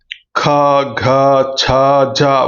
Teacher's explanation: పలికేటప్పుడు మనం పొట్ట నుండి గాలిని బయటికి తీయవలసి ఉంటుంది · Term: మహాప్రాణాలు